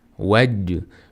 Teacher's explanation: Bu yerda j harfi qalqala harflardan biridir. Hamda bu yerda qalqala qilish kerak.